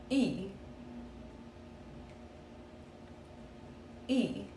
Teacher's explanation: English speakers often pronounce it like the Y in shai. But the Swedish E is a rounded front vowel. · So say E as in C, but round your lips like you're saying. Your tongue stays high and forward.